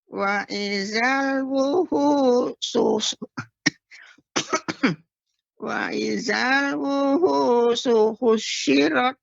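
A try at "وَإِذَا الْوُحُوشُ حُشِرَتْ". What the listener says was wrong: Baik, tapi shinnya nggak boleh tasydid, Nek. Bukan husyirat. Husyirat. Husyirat.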